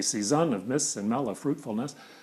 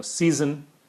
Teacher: I turn the iamb around, make a troche of it